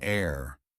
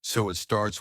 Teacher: in air the H is silent so it starts with the vowel sound